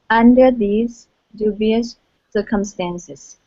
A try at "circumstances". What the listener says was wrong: Okay, so here you're putting the stress here at the end saying circumstances. The stress is at the very beginning. Da-da-da-dum. Circumstances.